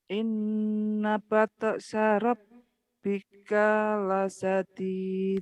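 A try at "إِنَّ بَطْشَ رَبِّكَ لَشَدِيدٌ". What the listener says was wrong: kanya pendek. Inna bat syarabika lasyadid. Did baru panjang. Batok inna batok kalau kelas sugro ya toknya kan tok huruf bukan huruf tak tapi tok. Batsya hanya besar. Inna batsya ini ibu-ibu di sini rata-rata nggak bisa sin loh, saya juga bingung.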